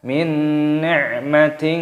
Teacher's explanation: nun sukun bertemu dengan huruf nun, hukumnya dibaca idgham bi gunnah. Idgham itu artinya memasukkan bi gunnah dengan berdengung, jadi dimasukkan disertai berdengung.